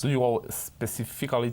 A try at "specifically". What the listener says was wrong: Specifically. Lo has dicho bien, pero saltamos una sílaba. Specifically. Specifically.